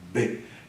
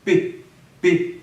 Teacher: B é mais sonoro e o p menos sonoro porque uma é muda e outra é sonora